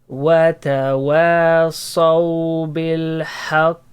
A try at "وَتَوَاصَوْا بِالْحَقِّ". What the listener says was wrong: Don't say بالحق. بالحق. شدة. Yeah, the qalqala, it has levels, okay? The letter, when it has shadda, it will be the highest level of the qalqala. So the sound should be more strong.